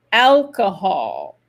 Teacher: c'est super important de bien faire l'accent tonique sur la première syllabe